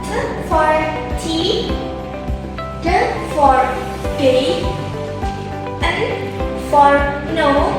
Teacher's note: All of these are made by placing the tongue close to the alveolar ridge. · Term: alveolar sounds